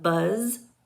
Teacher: the sound for Z and the voiced s is z as in the beginning of zoo and the end of Buzz